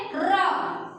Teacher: र जो वर्ण है उसे बोलने पर हमारी जीभ जो होती है कंपन करने लगती है, इसलिए इसे क्या बोला जाता है, प्रकंपी भी बोला जाता है।